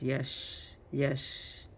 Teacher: We got the SH sound. Your tip of your tongue is not touching anywhere. Yash, it's not touching the, it's the side of your tongue, touching the roof in the middle, like by the inner upper teeth, inside, next to the palate.